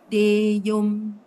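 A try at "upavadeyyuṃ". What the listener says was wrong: Okay, except this one, you must emphasize the double Y. So it's Deyum.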